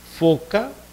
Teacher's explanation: Labio dental, los dientes inferiores se aproximan al labio.